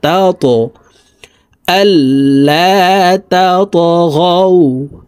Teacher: ত হরফ কলকলার হরফ, উপরের দিকে ধাবিত করে ধাক্কা দিয়ে উচ্চারণ করব।